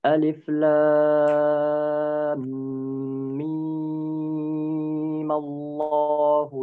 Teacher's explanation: Yang pertama itu Ustaz saat Alif Lam Mim dibaca mad tabi'i karena huruf yang sukun itu berubah menjadi hidup, dan yang kedua dibaca tetap mad lazim karena masih ada sukun di sana. Nah, mad lazim yang dibaca, yang 6 harokat dibaca sekarang